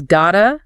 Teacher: Think about got to. Got to, yeah. Spoken naturally, it often becomes gotta.